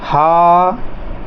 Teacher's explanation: हा थोड़ा ज़ोर से बोला है, गहरी सांस में बोला है, इसको बोलने में समय अधिक लग गया है, तो ये हो जाएगा आपका दीर्घ स्वर